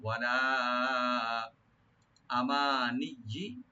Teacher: এখানে লাম ওপেন রেখে তিন আলিফ টানবেন মধ্যে মুনফাসিল। ওয়ালা আমানিজি, আমানিজি, এখানে হামজার উপর টান হবে না, মিমে টান হবে।